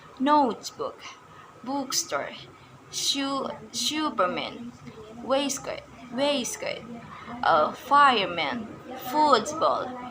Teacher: the stress placement is the first term